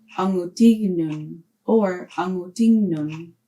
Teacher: KN assimilates to GN or N with the tail N.